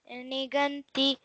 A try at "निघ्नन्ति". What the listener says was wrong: one small correction. Nighnanti. Say that, not nighananti. Nighnanti.